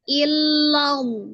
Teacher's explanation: Maka dibaca tafkhim atau tebal karena sebelumnya ada huruf yang berharokat fathah ya, maka dibaca tebal.